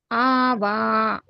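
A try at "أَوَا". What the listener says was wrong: లేదు, మీరు ఇక్కడ ఎన్ని దీర్ఘాలు ఉన్నాయి? మొదటి దానికి దీర్ఘం తీస్తున్నారు, రెండో దానికి తక్కువ తీస్తున్నారు, రెండు సమానంగా తీయాలి.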